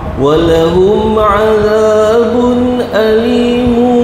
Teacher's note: mim bertemu dengan ain izhar syafawi. Jelas eh.